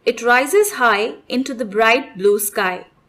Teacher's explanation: the I sound in words describe, high, rise, bright, and sky gets stressed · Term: assonance